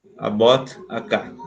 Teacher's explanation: the t sound is very weak